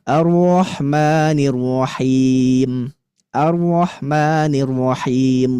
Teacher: Kayak huruf r biasa tapi dia harus takrir. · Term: huruf ro